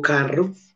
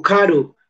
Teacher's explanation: Si yo, por ejemplo, digo carro en español, digo carro, es un fonema vibrante múltiple apicoalveolar, carro, o digo caro, vibrante simple apicoalveolar en español, pero digo en inglés car, ahí nos damos cuenta que el ápice de la lengua en el fonema para articular carro en inglés, en car, ya no es alveolar, sino palatal, el ápice va a la zona palatal, paladar duro.